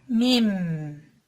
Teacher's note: dudak içleri birbirine hafifçe vurularak çıkarılır